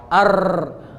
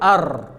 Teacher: Ro sifatnya adalah takrir. Apa maksud takrir? Getaran. Ada pengulangan. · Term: sifat takrir